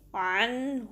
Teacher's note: یہاں پر اب سورہ مسد میں آپ دیکھ سکتے ہیں ورس نمبر 2 میں عنہ، تو آپ دیکھ سکتے ہیں نون ساکن کے بعد ہا آ رہا ہے جو کہ اکثر حلق والا ہا ہے، deeper part of the throat والا · تو ادھر بھی ہم اظہار کریں گے عنہ، تو ادھر کوئی غنہ نہیں ہوگا جس طریقے سے عنہ یا اس طریقے سے پڑھنا، بالکل غنہ نہیں کرنا، نون کی آواز کو چھپانا نہیں ہے